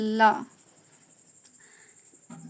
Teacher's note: इसमें मुख द्वार मध्य में बंद होता है, जो इसमें मुख द्वार होता है ये क्या होता है, मध्य में, मतलब बीच में बंद होता है, और हवा दोनों ओर से निकल जाती है, और जो हवा होती है ये आपकी दोनों तरफ से निकल जाती है। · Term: पार्श्विक